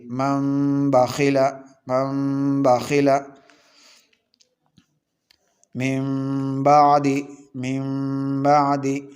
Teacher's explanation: تیسرا اقلاب ہے، اقلاب نون ساکن یا تنوین کے بعد با آئے تو نون ساکن یا تنوین کو میم سے بدل کر غنہ کے ساتھ پڑھیں گے، اس کو اقلاب کہتے ہیں۔